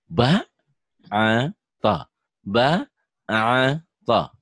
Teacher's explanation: ba to nggak boleh dipanjangkan di sini